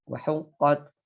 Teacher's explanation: Jadi harus ada nafas yang disertai ya, yang menyertai keluarnya huruf ta. Apalagi ketika sangat terlihat ketika dia huruf ta ini di harokat sukun ya. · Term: huruf yang hams